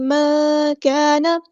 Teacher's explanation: الف مد آ گیا تو مد اصلی کریں گے، خالی الف سے پہلے زبر ہے، کاف باریک لائٹ لیٹر ہے ہمارا، تو یہاں پہ الف بھی ہم باریک پڑھیں گے.